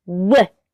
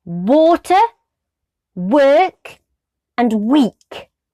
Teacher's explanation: narrow space at the back whoop and voice that out whoop lips like a pout narrow space at the back with the tongue and blow out but voice it